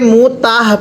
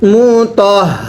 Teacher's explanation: হাটা উচ্চারণের সময় গলার মধ্যে আওয়াজ করে পড়তে হবে।